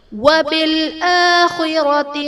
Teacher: آخرتی میں الف پر کھڑا زبر ہے جو کہ الف مدہ کے قائم مقام ہے، اس لیے ہم ایک الف یعنی 2 حرکات کے برابر کھینچ کر پڑھیں گے